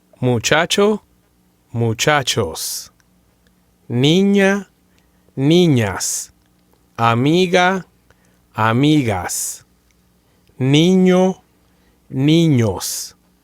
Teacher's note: listen carefully to the final S sound and listen to how it's always going to be a hissing S sound.